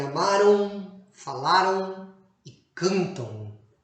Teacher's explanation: E na pronúncia, palavras terminadas com an, a pronúncia da consoante M alongada acaba se transformando na semivogal U, como em amaram, falaram e cantam. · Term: ditongos nasais decrescentes